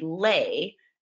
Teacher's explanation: the a is open that means it's going to be lay